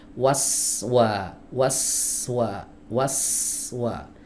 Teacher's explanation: Waswa ya. Hiddatus ya. Tajam suaranya. Itu yang disebut dengan safir ya.